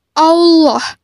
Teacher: melakukan huruf lam pada love Dul jalalah atau lafaz Allah maka huruf lam harus terdengar menebal dengan cara menutup kan bagian lisan ke langit-langit